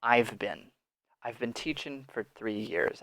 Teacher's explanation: and hasn't but here now we have the vowel reduction so in very fast very normal English speech we do not say beam we say been much shorter much faster